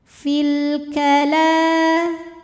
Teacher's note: dilepaskan fil kemudian Alif lamnya dinamakan dengan alif lam ah karena alif lam menghadapi huruf qamariah yaitu Kaf maka lam sukun dibaca jelas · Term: alif lam qamariyah